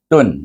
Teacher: bertemu dengan huruf halkum baca dengan Izar jangan panjang jangan dengung